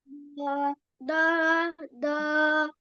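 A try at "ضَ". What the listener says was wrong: Tebalkan lagi. Tambah tebal lagi. Bo.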